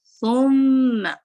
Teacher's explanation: ثم یہاں پہ میم مشدد ہے تو اپنے اچھے سے غنہ کر کے چلنا ہے. سا کے لیے آپ کو ٹپ آف دا ٹنگ اوپر کے 2 دانتوں کے سرے کو لگے گی لیکن آپ کو دمہ کا بھی خیال رکھنا ہے.